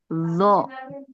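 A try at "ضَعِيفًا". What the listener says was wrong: Enggak zo. Ini kalau zo itu dia yang temannya to. Nah, ujung lidahnya nempel ke ujung gigi seri atas. Kalau ini temannya sod, tapi lidah ke gigi geraham atas. Boleh kiri ataupun kanan. Nah, nah, jadi bukan zo ya, beda tempat. Kalau zo itu ujung lidah.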